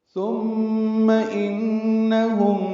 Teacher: ثم انہم میں نون مشدد پہ غنہ ہے، تو یہاں دونوں مثالیں موجود ہیں، میم مشدد کی اور نون مشدد کی جن میں غنہ ہوتا ہے۔